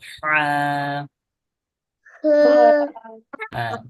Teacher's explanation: গলা থেকে বলতে হবে এবং চাপ দিয়ে এটা যেন নাকে না যায়।